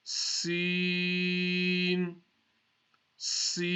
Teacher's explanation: when we read the letter Seen. We're going to be having a whistle sound.